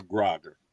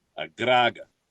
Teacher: You trill the R slightly